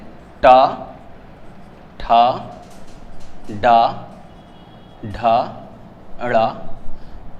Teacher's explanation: ट वर्ग का उच्चारण स्थान मूर्धा होता है। इसी वजह से इसको हम मूर्धन्य वर्ण भी बोलते हैं।